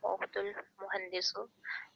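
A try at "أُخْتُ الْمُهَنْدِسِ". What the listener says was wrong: अच्छा, इसके सीन के आखिर में आपने दम्मा लगाया है, यहाँ पे कसर लगेगी।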